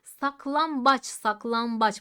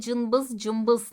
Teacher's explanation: değişimine ya da NB çatışmasına Türkçede dudak ünsüzler inden biri olan B sesi kendisinden önceki n sesini m'ye dönüştürür buna dudak ünsüzü benzeşmesi ya da n m değişimi diyoruz